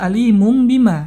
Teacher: ada tanwin bertemu dengan ba maka hukumnya adalah yang di mana tanwinnya bunyi nunnya diganti dengan bunyi huruf mim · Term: iqlab